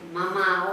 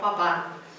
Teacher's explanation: los dos son cerrados, pero la M es sonora, mientras que la P es sorda